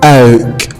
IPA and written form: əʊk (oak)